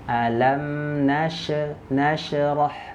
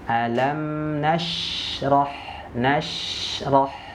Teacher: ya sifat yang kedua dia memiliki sifat rakwah mengalir berarti apa huruf syin di sini sukun harus kita alirkan jangan sampai terpantul nah ini penyakitnya terpantul Kenapa karena dia bertolak belakang dengan sifatnya